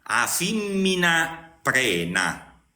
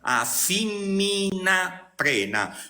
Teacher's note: sentite bene che sto pronunciando a fimmina Prena cioè Tutte le vocali sono toniche